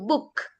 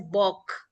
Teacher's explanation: Now, same with the oo sound, that is double O. Instead of making O sound, it changes the sound and it becomes oo.